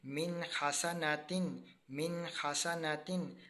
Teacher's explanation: نون کے اوپر جزم ہے اور اس کے بعد حروف الکی میں سے خا ہے، اس لیے ہم نے یہاں پر اظہار کیا